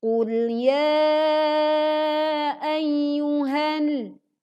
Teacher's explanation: Ya dibaca panjang 4-5 harokat.